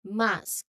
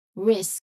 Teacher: It's very consistent from S to K. No vowels on in between. No pause in between. It's just very direct.